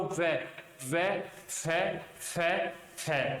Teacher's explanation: नीचे के होठ और ऊपर के दांत का स्पर्श होगा, तो दंतोष्ठ में दोस्तों आ जाएगा व।